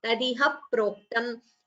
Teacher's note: So before pro, you have to chant another p, double sound of pa.